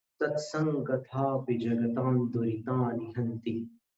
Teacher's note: जगतान में जो अनुस्वार है उसको दुरितानि के दू में मिलाना।